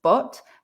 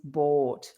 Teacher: the main difference between but and bought is the length of the vowel